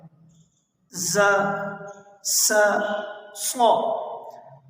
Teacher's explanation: ابھی ہم ان حروف کو دوسرے خانے میں لے کر آتے ہیں، صفات والے، کہ صفات جو ز اور س ہے، ان دونوں میں بلکہ تینوں حرفوں میں سیٹی کی آواز آتی ہے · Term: سیٹی والے حروف